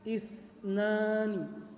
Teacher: Huruf sa-nya itu ujung lidah menyentuh gigi atas